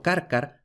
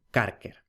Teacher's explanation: es muy frecuente la vacilación entre el final de palabra ar y el final de palabra er